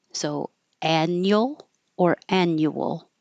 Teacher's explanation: And this you can say with 2 syllables, annual, or with 3 syllables, annual, but the U changes to be more relaxed instead of annual.